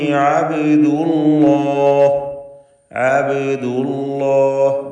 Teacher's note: ബാഇന് സുക്കൂനുണ്ട്. ഖൽഖല സൂറ നൽകി ബാഇനെ ഹറക്കത്ത് വ്യക്തമാക്കി ഉച്ചരിക്കുക